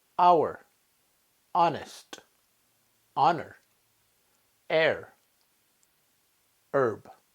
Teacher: Here are words, most of the words, with a silent H at the beginning